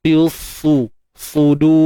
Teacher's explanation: sad ni kita kena muncung sebab dia berbaris hadapan. Bukan sebab dia huruf bibir, tapi sebab dia baris depan lah.